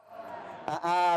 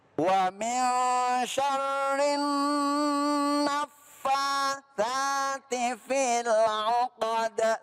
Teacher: Di rinnya dengungin dulu baru ke na-nya.